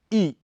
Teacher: इसके उच्चारण में जीभ का अगला हिस्सा थोड़ा ऊपर उठ जाता है होंठ कुछ खुले और निष्क्रिय रहते हैं